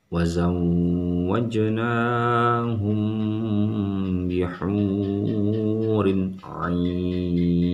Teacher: Nah, kalau ini harus dengungkan, mim mati bertemu ba. Kalau ini tanwin bertemu ain, hukumnya izhar, sama sekali tidak boleh ditahan atau didengungkan.